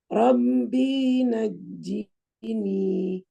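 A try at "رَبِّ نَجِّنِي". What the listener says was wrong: Dinya pendek Ustazah, hati-hati. Masih panjang. Masih panjang, Ustazah. Rabbi najini. B-nya pendek. Masih panjang dikit.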